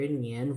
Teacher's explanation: Nian, rising tone, second tone